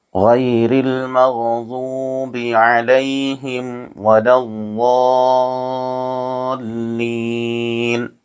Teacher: ضا میں حروف مدہ کے بعد والے حرف پر تشدید ہے، اس لیے مد لازم ہوگا، ایک الف سے زائد یہاں پر کھینچ کر ادا کرنا چاہیے.